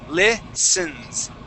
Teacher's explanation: that T in that word is going to be silent. We say listens.